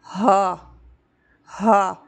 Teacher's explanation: ये हा भारी अदा होगा। हा हा यानी सीने पे बोझ फील होना चाहिए, हमें लगना चाहिए कि हम हा अदा करें, क्योंकि ये हर्फ सीने की जानिब से अदा होता है इसीलिए। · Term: हमज़ा हा